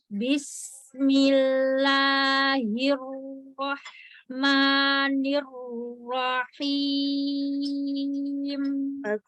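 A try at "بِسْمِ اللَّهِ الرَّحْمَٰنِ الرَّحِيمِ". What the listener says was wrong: Tapi kurang aliran aja di haknya ya. Bismillahirrahmanirrahim. Ambil lagi makhraj haknya lebih ke tengah, coba. Lebih dipedesin.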